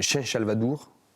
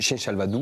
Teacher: comme ça se prononce ici, Chen Salvador même, sans le R